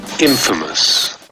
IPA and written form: ˈinfəməs (infamous)